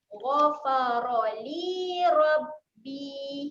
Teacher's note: Li ni dibaca dengan panjang 2 harakat